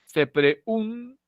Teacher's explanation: te das cuenta que la lengua ha tocado los dientes a la altura de la N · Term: se dentaliza